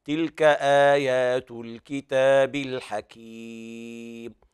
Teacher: تلاحظ أن أنت تخرج المد من الخيشوم، المد يخرج من جوف الحلق وهي المنطقة التي أسفل الذقن إلى بداية النحر، هذه يسموها الحلق.